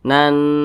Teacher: fathah Nah maka ini berarti gunah musyaddadah bacanya itu didengungkan E dengungnya itu dua hingga tiga harakat